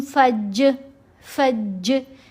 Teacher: जब हम पढ़ेंगे फ़ा ज़बर जीम फज, फज, जीम की आवाज़ पलट कर आई, डबल होती हुई आवाज़ फील हुई, तो ये कलकला है